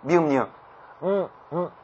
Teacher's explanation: 콧소리 코에서 나는 소리이기 때문에 만약에 코를 막으면 발음이 되지 않는 거예요